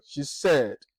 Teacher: there is a falling tone. The tone of your expression or your voice goes down. That is the pitch of voice.